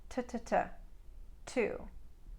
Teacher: a standard American speaker will pronounce a t or a D sound with more of the surface of the front of the tongue about that much hitting the hard pallet if I were to